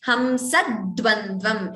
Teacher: Extra d is heard before dvandvam. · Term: dvitvam